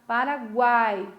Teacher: Olha como o A é forte, o U quase não se escuta. O I ainda escuta um pouquinho mais, né? Mas o U quase não se escuta. · Esse U e esse I é pronunciado de modo mais fraco. Paraguai. Olha como o A é forte, o U quase não se escuta. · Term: semivogal